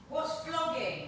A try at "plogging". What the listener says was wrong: No, with a P. Plogging. Plogging.